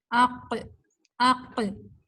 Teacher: قاف حالانکہ موٹا حرف تو ہے مگر یہ سٹک نہیں اوپر جا کے زبان آپ کے تالو سے لگتی، چپکتی نہیں ہے. قا حرف باہر نکل جاتا ہے، موٹا پڑھا گیا مگر یہ الانفتاح کی بھی اس کے اندر صفت ہے.